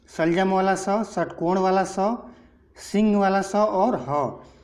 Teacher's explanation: जब इन चारों वर्णों का उच्चारण किया जाता है तो जो भी हमारा ध्वनि उत्पादक तंत्र है उसमें घर्षण होता है और वहाँ से ऊष्मा पैदा होती है, एक गर्माहट पैदा होती है, इसलिए इसको ऊष्म व्यंजन के अंतर्गत रखा गया है।